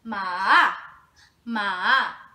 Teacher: It falls and then it rises again. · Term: third tone